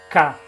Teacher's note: Porque o K é uma dessas consoantes surdas, que ele não tem duração